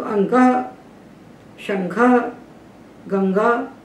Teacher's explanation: क खा गघ का उच्चारण स्थान कंठ है अनुस्वार का स्थान तो नासिका है